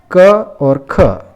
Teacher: क और ख, इन दोनों वर्णों का उच्चारण स्थान कंठ है तथा आभ्यंतर प्रयत्न में ये स्पष्ट में आते हैं, तो इसलिए इन दोनों का यहाँ पर सवर्ण संज्ञा होती हैं।